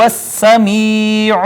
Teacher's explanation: سین پہ صفیری، چونکہ اس میں صفت صفیر پائی جاتی ہے، سیٹی کی آواز آئے گی